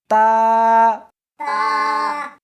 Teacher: اس حرف کو زبان کے اوپر کے تالو سے ملا کر پڑھیں گے